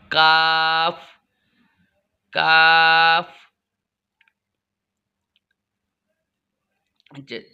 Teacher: ज़ुबान की जड़ से थोड़ा आगे बढ़ाकर ऊपर वाले तालु के साथ लगाकर काफ अदा होता है। जैसे काफ काफ।